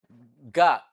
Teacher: Ga is a voiced velar plosive.